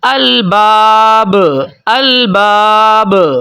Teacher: با کے اوپر جو قلقلہ ہو رہا ہے وہ بھی قلقلہ کبیرہ یعنی کہ تھوڑا سا بڑا قلقلہ ہو رہا ہے